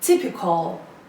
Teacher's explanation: It has 3 syllables and the stress is on the first syllable.